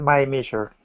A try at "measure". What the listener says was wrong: And also measure, okay, as a verb or a noun, it's more measure. It's not a me sound. measure.